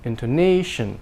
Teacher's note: Intonation, the tone is a little longer, minor stress. And the A is much longer than the others, and the Shun is very short